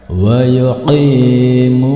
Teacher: Berikutnya pada lafaz wa yuqimuna, di sini ada huruf qaf berharokat kasroh bertemu dengan huruf ya berharokat sukun, maka ini termasuk bacaan mad tabi'i, panjang bacaan mad tabi'i 2 harokat